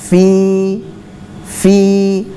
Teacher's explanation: di bibir bawah bagian dalam bertemu dengan ujung gigi seri atas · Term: makhrajnya huruf fnya